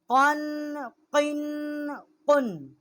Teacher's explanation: وسط زبان اور اوپر کے تالو سے اس کا مخرج ہے، بڑی قاف ہیں یہ